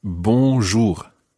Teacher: the first syllable is very nasal